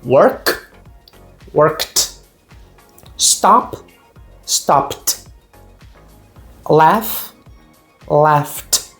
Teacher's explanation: Esses casos, esses tipos de sons, eu vou ter um som de T na hora de colocar o ed. Ou seja, o e você não pronuncia e o d assume esse som de t.